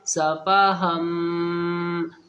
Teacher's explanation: یہ ہم کی آواز جو ناک میں جا رہی ہے اس کو ہی گنہ بولتے ہیں، ناک میں تھوڑی دیر جو آواز رک جاتی ہے اس کو گنہ بولتے ہیں، اس بات کا خیال رکھیں۔